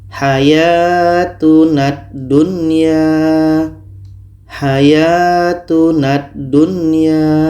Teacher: kita masukkan secara sempurna kepada da kita baca · Oke, kita tidak baca hayatunal dunya. Lam tidak kita baca lagi. Tapi bunyi na ini terus masuk ke dah. Kita masukkan secara sempurna kepada dah. Kita baca hayatunad dunya. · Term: idgham Kamil, idgham kamil